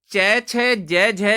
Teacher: आदिकालीन हिंदी में होकर ये स्पर्श संघर्षी हो गए। स्पर्श तो था पर उच्चारण के समय संघर्ष होने लगा, इसे स्पर्श संघर्षी कहते हैं।